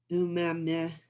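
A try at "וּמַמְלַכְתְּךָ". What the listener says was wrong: The two dots are silent there. Umem. Well, you could, but there it's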